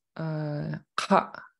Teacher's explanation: he does a glottal stop at the end of the vowel